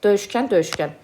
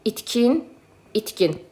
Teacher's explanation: 2 dənə kər samit yanaşı gəlib deyə ikinci tərəf cingiltiliyə keçir.